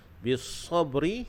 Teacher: huruf ba di situ dibaca dengan qalqalah sughra